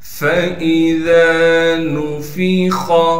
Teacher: نون کو بغیر کھینچے پڑھنا ہے۔ خا کو موٹا کر کے پڑھیں گے، اس لیے کہ خا حروف مستعلیہ میں سے ہے